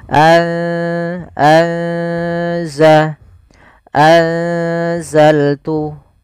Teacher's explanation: maka anza seakan-akan kita langsung menafalkan ke huruf zainya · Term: ikhfa